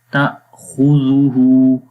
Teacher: تو یہاں پر اب کیا ہوا، یہاں پر حمزہ ہے، اور پھر دوسرا رول یہ تھا جو میں نے پہلے بھی بتایا کہ حمزہ کے اوپر جب جزم آئے تو جھٹکا دیتے ہیں، تو لہٰذا اس یہاں پر جھٹکا دیں گے۔ · خا حروف مستعلیہ میں سے ہے، یعنی موٹے حروف میں سے ہے، اس کو موٹا پڑھیں گے ہمیشہ